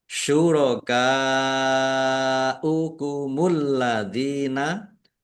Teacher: Syurakaukumul ladzina kaf fathah alif mat tobi'i, tetapi karena bertemu dengan huruf hamzah dalam satu kata, maka menjadi mad wajib muttasil. Dibaca panjang harus 5 harokat.